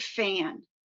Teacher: The a sound in fan is nasalized because it comes before the nasal consonant n.